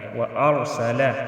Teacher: را ساکن ہے، اس کے آگے زبر ہے تو اس کو ہم موٹا ادا کریں گے